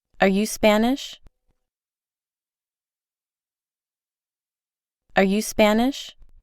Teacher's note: Observe que ahora la oración no tiene el acento al principio, sino al final.